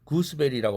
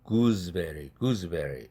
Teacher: 그때 베리가 브가 유성음이죠. 그렇게 되면 앞에 있는 구스 할 때 스라는 철자는 z로 바뀐다. 뒤에 브라는 유성음 영향을 받아서. 그래서 이 단어는 구스베리라고 발음하지 않고 구즈베리, 구즈베리 이렇게 발음한다는 사실입니다. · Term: 유성동화